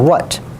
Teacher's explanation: a W that's made in the velar area, which is the sound we have for what